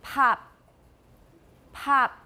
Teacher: Did I produce them in the same way? No, the first one has aspiration, that puff of air.